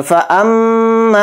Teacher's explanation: तो ध्यान से देखिए, ये हमज़ा को मीम में मिला देंगे, मीम पे तशदीद होने की वजह से, और मीम पे तशदीद है तो मीम में गुन्ना भी करेंगे